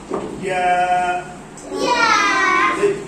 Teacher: জিহ্বার মাঝখান থেকে উপরের তালুর সাথে লাগিয়ে।